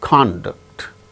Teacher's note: the first syllable gains the stress when it is used as noun